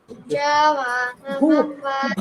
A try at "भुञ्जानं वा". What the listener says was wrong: ಭ ಅಂತ ಹೇಳಬೇಕು ಭುಂಜಾನಂ ವಾ